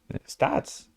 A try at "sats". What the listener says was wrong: Sats. Sats. You said stats. SAT. You're saying statistics.